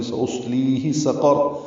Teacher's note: حمزہ اقصی حلق سے بالجہر ادا ہوگا، صاد پر پڑھیں گے، اور یہی فرق ہے سین اور صاد میں۔